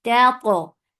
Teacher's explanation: this ta is mutbaqa, and it has qalqala